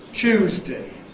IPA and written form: ˈʧuːzdɪ (Tuesday)